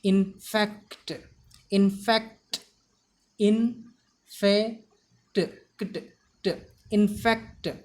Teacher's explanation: The stress should be given on fa.